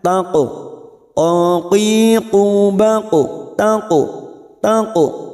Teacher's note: pantulkan dengan tebal karena huruf qaf yaitu huruf isti'la, maka bunyinya taqu, aqiqu, baqu, taqu, taqu.